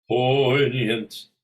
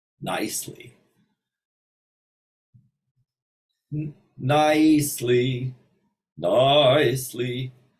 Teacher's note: make the second vowel maybe 10% and the first vowel 90%. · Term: diphthong